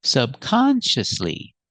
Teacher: stress is on the second syllable subconsciously and the fourth syllable primary stress on the second syllable